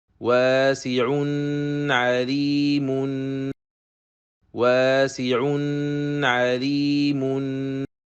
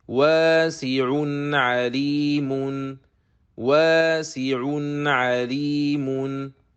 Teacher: It should be pronounced with the normal Ghunnah that is already part of letter Noon.